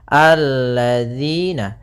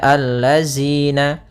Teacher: Kemudian pada lafal di sini hati-hati dalam pelafalan jangan dibaca allazina. Yang sering terjadi kesalahan adalah membacanya zal dengan zai.